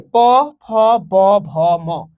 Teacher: এগুলো যখন আমরা উচ্চারণ করব আমাদের ঠোঁট, এই যে দুটো ঠোঁট আছে, এই দুটো ঠোঁট ব্যবহার করতে হচ্ছে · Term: ওষ্ঠধ্বনি